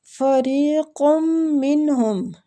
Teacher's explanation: قاف کو میم مشدد کے ساتھ ملاتے ہوئے غنہ کریں گے